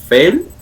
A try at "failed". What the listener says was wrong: Failed. Failed. D.